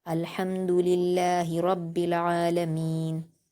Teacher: وقف کرتے ہوئے نون کے زبر کو جزم میں بدل دیں گے۔